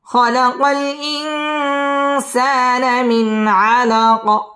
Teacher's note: সাকিন করলে কফটা কলকলা করে ধাক্কা দিয়ে পড়তে হবে